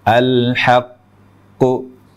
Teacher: terlalu lama menahan huruf q